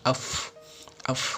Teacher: Ini bibir bawah ketemu gigi atas